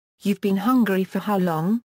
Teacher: Appearance of interrogative word how and rising intonation make the clause a constituent question